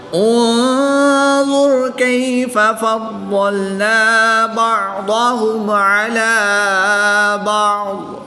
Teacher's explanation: ضاد حروف مستعلیہ میں سے ہے جس کو پوری یعنی موٹا پڑھیں گے